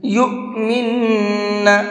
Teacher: حمزہ ساکن کو جھٹکے کے ساتھ میں پڑھا جاتا ہے، اس لیے میں نے اس کو جھٹکے کے ساتھ میں پڑھا ہے۔